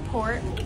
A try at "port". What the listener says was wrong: What I say about no R's, it's port. You're making it hard for yourself. It's Cap'n.